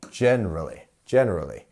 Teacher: we are pronouncing that gen much stronger